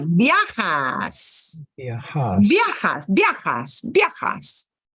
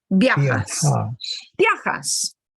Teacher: The first A gets a little more punch. The I and the A really blend together.